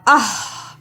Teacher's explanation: یہ ہا حلق سے رگڑ کے نکالنا ہے